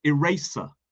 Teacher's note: eraser with a S sound, not a Z sound